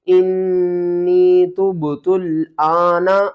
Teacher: حمزہ کو ایک الف کے برابر اوپر کی طرف کھینچیں گے